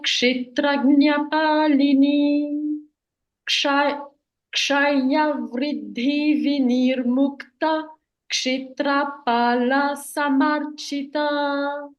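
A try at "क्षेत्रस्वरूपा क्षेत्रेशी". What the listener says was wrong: Now only one thing you have to do is A, I, O, Au. These are permanently long sounds. So instead of finishing Kshetra Swarupa, hold the Kshe. Kshetra Swarupa, Kshetreshi, Kshetra, Kshetratya. So hold the Kshe longer. One matra extra.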